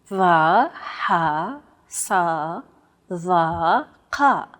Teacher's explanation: They sound like the D, H, S, T, and Q sounds respectively, except much more tense because the throat is constricted. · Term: emphatic consonants